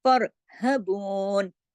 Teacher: لیکن را کو ہم نے فا کے زبر کے ساتھ پڑھا، جب را پہ پچھلا زبر ہم لے کر آئے ساتھ ملانے کے لیے تو اس کے اثر کی وجہ سے را یہاں پہ موٹا ہو گیا